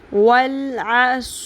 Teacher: سیٹی کی آواز لے کے آئیں، سیٹی کی آواز آتی ہے صاد میں، صرف سین اور صاد میں ڈفرینس یہ ہے کہ صاد کو ہم نے پر کرنا ہے، سا کی طرح نہیں پڑھنا صاد کو.